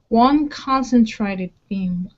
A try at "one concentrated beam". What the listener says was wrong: Give me a long A sound. Instead of treaded, traded.